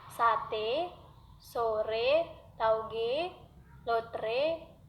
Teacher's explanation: Vokal E dilafalkan dengan cara menganjurkan lidah ke depan dan ke tengah, disertai dengan menghembuskan udara keluar, sedangkan bentuk mulut dilebarkan.